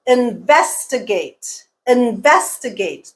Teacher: the stress is on the second syllable again not on the first not on the fourth